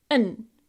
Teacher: But said quickly, we soften it and we remove the d at the end.